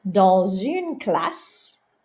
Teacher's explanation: If I said in a class, dans une classe, because une starts with a vowel, you would hear the S in liaison